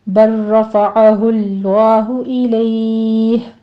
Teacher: بر رفعہ اللہ میں آپ نے لام اور را کو مدغم کر دینا ہے، آگے لفظ جلالہ پور پڑھا جائے گا، الیہ ہی ہے، یہاں پر آپ نے اگر وقف کرنا ہے، وقف مطلق ہے تو پھر ہم مد عارض لین کر لیں گے، 3 کاؤنٹ کر لیں گے اس کو۔